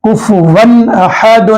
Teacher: تو یہاں پر تنوین کے بعد حمزہ آ رہا ہے تو یہ تنوین کے اندر جو نون ہے کفون، ون میں جو نون ہے وہ نون کی آواز کو خوب ظاہر کر کے جلد پڑھنا ہے